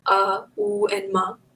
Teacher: om can be split into three syllables ah ooh and ma